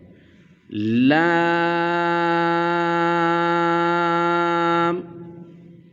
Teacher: जुबान का किनारा और अनया से सनाया तक के दांतों की जड़ से यह अदा होगा